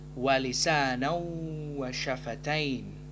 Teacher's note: Hukum bacaan yang ada adalah idgham bi gunnah. Huruf nun dengan fathatain, harokat fathatain bertemu dengan huruf waw, maka idgham bi gunnah, idgham dengan dengung.